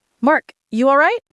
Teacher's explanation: A quick, level-toned, all right, is a greeting.